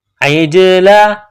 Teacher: عین کو جیم کے ساتھ ملانا ہے، جیم کے اوپر قلقلہ کرنا ہے